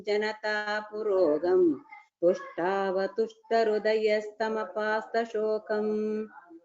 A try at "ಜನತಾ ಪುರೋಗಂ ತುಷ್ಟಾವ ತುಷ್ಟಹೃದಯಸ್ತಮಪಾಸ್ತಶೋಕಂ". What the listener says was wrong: Okay, you have said well, except for a bit of the Mahaprana, bit of polishing is required.